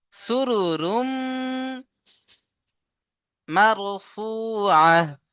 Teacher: তাহলে তানবিনকে মিমের সাথে মিলিয়ে একালিফ গুন্না করে পড়তে হবে। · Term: ইদগামে নাকিস